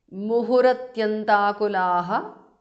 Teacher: Muhuhu, visarga changes to repha